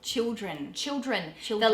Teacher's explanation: we turn our ls into w's